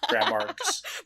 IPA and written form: gɹæmɑɹgz (grammargs)